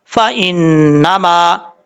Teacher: ان، فان، نون زبر نا، فان، میم زبر الف ما، فانما، نون کے اوپر شد ہے، غنہ کریں گے ایک الف کی مقدار